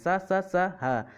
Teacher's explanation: इसको बोलने में सा हा मतलब ज़्यादा वायु फूकनी पड़ रही है और या ज़्यादा आवाज़ से निकल रही है। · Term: महाप्राण